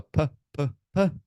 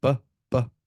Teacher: they should hear the echo of the voiced B